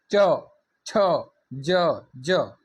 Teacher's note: તાળવે જે છે આપણી જીભ અટકે છે એટલે એને કહેવાશે તાલવ્ય